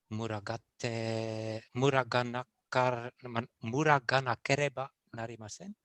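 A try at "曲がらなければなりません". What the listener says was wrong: So just that ru needs to be turned into a ra, but without the European rolling of your r's.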